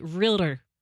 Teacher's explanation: I also hear people say realtor they add a third syllable in there